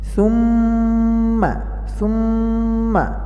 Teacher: নুন এবং মিমে তাসদিদ হলে গুন্না করে পড়তে হবে। এখানে মিমে তাসদিদ রয়েছে, সেজন্য গুন্না করতে হবে।